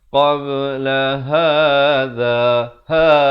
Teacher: Qabla hadha, ha, di pangkal kerongkong